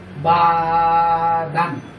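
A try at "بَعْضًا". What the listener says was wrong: বা দান একটু বা দন হবে। দদের মধ্যে কি হয়? বাদের উপর দদের মধ্যে কি হয়? দ। হ্যাঁ, ওই যে 8টা হরফ এমন আছে না যেটার মধ্যে জবর দিলে জবর উচ্চারণ হয় না। হ্যাঁ, তার মধ্যে একটা হরফ কি? দদ। দদের উপর জবর দিলে হয় দ, আর দদের উপর 2 জবর দিলে দন। বা বা দন, বা দন।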